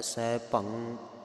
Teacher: ਭਬੇ ਦੇ ਉੱਪਰ ਟਿੱਪੀ ਆਵੇਗੀ ਭੰ ਅੱਧੀ ਆਵਾਜ਼ ਲੱਗਣੀ ਹੈ